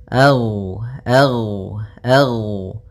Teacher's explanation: Gin termasuk salah satu sifat huruf yang dia adalah sifat rakhawah yang di mana suaranya mengalir